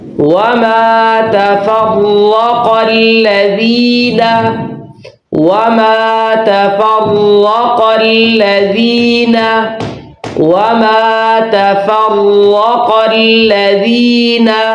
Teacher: را کو پر ادا کرنا ہے، قاف کو موٹا ادا کرنا ہے، اس لیے کہ یہ موٹے حروف میں سے.